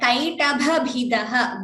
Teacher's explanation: Both the bhas, the mahaprana should be clear.